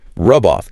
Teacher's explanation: The final consonant of one word becomes the initial consonant of the next word if that next word starts with a vowel. So, the hard B in rub glides directly and seamlessly into the open O in off.